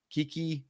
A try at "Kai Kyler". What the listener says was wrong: No, Kyler's right, but the first name I always thought was Kiki, but it's actually Kai.